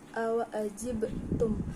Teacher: terdapat hukum bacaan qalqalah sugro karena terdapat huruf ba dan dibacanya mantul